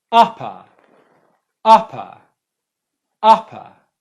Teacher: the first syllable is the stressed one the second syllable is unstressed and that's where the schwa sound is